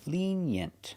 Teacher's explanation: Put the stress on the first syllable.